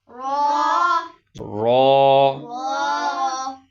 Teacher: را، جب اس کو اکیلا پڑھا جائے گا تو یہ را موٹا ہوگا